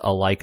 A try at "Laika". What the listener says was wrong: It's from Leica. I think it's Leica. I don't think there's an A at the beginning.